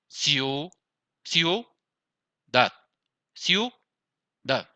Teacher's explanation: Que tenemos como el mayor fuerza en la segunda vocal. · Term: diptongo